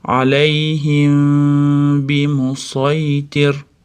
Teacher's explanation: Mimda b da chiqadigan joyga yashiramiz. Ya'ni mimda aniq o'qimaymiz. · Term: ixfo shafaviya